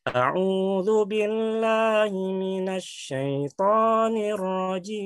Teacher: kalau di ayat awal dia tinggi kemudian dia ikuti di nada kedua rendah misalnya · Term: Tinggi menurun